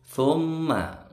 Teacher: ini ada mim bertasydid, dengung lama. Ini bacaan gunnah.